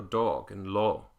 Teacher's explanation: Australian dialects will sometimes use a closed Oh · I have to really think to round it and go dog and law instead of dog and law. Australian dialects will sometimes use a closed O